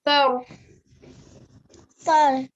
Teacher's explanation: when you're saying this letter tha, yeah, a bit of air is escaping from the mouth